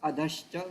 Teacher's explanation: Adah cha, it becomes adhascha. Whenever visarga is there, followed by cha, cha, visarga will change into sha. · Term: Visarga sandhi